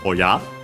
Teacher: The accent of it is on the ya